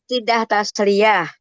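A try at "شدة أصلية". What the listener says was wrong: Bukan tidak tasliyah, nggak ada sidah tasliyah, sidah asliyah asli.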